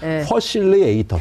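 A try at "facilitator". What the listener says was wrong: F 발음이 안 되는 식이네요. 퍼실리에이터. 못 알아들을 것 같아. 아메리카 사람들이.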